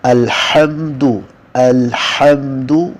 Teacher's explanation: شروع میں آپ نے ہا کو ادا کرنا ہے وسط حلق سے